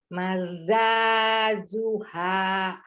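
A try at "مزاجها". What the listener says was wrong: Diulang mi, depannya mi bukan ma. Hati-hati ya jimnya.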